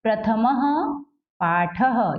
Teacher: म में कोई मात्रा नहीं है और उसके बाद विसर्ग लगा है, तो यहाँ इसका उच्चारण क्या होगा? ह होगा।